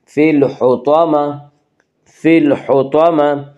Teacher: گول تا پر وقف کرنے کی صورت میں گول تا ہائے ساکنہ بن جاتی ہے